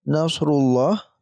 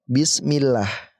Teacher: Yang pertama ini tebal, ya. Nasrullah. Yang kedua tipis, bismillah.